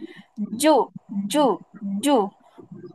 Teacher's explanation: জিহ্বার মধ্যখানটা উপরের তালুর সঙ্গে লাগিয়ে দেন। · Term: জিম